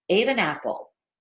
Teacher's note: the N at the end of an going into the vowel at the beginning of Apple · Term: connection